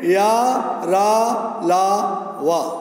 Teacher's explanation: उच्चारण के समय जीवा मुख के किसी भाग को स्पर्श नहीं करती। इनका उच्चारण जीभ, तालु, दांत और ओंठों के परस्पर सटाने से होता है, किंतु कहीं भी पूर्ण स्पर्श नहीं होता। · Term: अंतस्थ व्यंजन